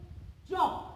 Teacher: প্রথমে রুদ্ধ থাকে, তারপর শ্বাসবায়ুর পথ একেবারে সুগম হয়ে যায়। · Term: ঘৃষ্ট ধ্বনি